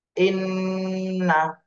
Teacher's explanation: হরকতের বামে নুন আর মিম, এই দুইটা হরফে যদি তাসদীদ থাকে তাহলে ওয়াজিব গুণা হয়। এখানে হরকতের বামে নুনে তাসদীদ এসেছে, এজন্য ওয়াজিব গুণা করতে হবে।